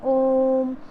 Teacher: जिसको बोलने के लिए दीर्घ स्वर से ज़्यादा समय लगता है बोलने के लिए, उसको हम प्लुत स्वर बोलते हैं।